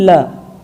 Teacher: जीभ मसूड़ों के पीछे वाला जो खुरदुरा सा भाग है वहाँ पर जाकर टकराती है। जैसे आप उच्चारित कीजिए ल, तो वो स्थान है वर्ष।